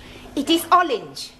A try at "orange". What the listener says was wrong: You really must work at those R sounds.